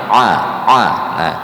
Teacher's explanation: a-nya tekankan lagi ya letaknya di wastol halqi pertengahan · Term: Ain